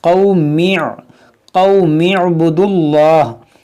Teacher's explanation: اس حمزہ کو نہیں پڑھیں گے، اس کو کہتے ہیں حمزہ وصلی، جب ملا کر پڑھیں گے تو یہ حمزہ گر جائے گا